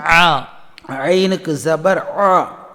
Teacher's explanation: இது எப்படி சொல்ல வேண்டும் என்றால், சாதாரணமாக வாந்தி எடுத்தால் எப்படி அடித்தொண்டையிலேருந்து அந்த வாந்தி வரும்போது சத்தம் போடுவோமோ அதுபோல் நாவின் நுடி, நாவின் கடைசி பகுதி மட்டும் சற்று மேலே உயர்த்தி நடுத்தொண்டையிலிருந்து வெளிப்படுத்த வேண்டும்.